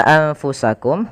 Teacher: ada huruf nun yang ia tidak berharakat maka kita hukumnya dengan nun sukun Kemudian bertemu setelahnya huruf Fa maka suara nunnya disamarkan kepada huruf Fa karena Fa termasuk salah satu dari huruf ikhfa yaitu huruf-huruf yang